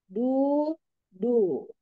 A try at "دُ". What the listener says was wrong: Itu ditarik ya. Ya, itu ditarik namanya, Mi. Ketika misalkan nih, ketika ditarik malah membunyikan huruf lain. Ketika ditarik jadinya ada suara yang aneh. Nah, itu gak boleh.